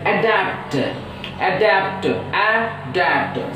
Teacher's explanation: So that A itself is a complete syllable, so that it is a first syllable and the second syllable is da, a da. So you should use stress on second syllable.